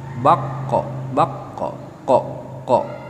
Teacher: makhluk yang kelima itu dari pangkal lidah dari lidah bagian dalam